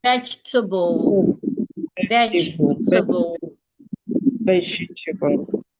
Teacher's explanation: because T here, TA, is in an unstressed syllable, the vowel there has to be reduced into a schwa. It becomes instead of te, it becomes t.